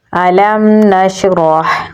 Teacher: हा को गले के दरमियान वाले हिस्से से निकालेंगे